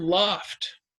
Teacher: it makes that ah sound instead of an O sound